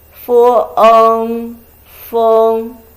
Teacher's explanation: It is a combination of fu and eng with fourth tone.